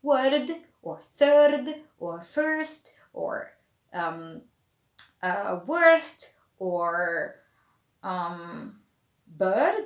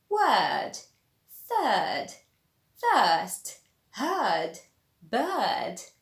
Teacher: So like I said, the R is not pronounced, and the vowel just becomes longer. So you'd say word, third, first, heard, bird, and the R just disappears.